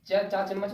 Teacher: से उच्चारण होगा च चार चम्मच वाला उच्चारण जो है ना जीभ बिना तलवा में लगे आप उच्चारण नहीं कर सकते